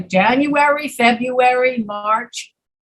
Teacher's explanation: many americans cannot pronounce the first r february because the first r and the second r are so close together they just skip the first star and they say february that's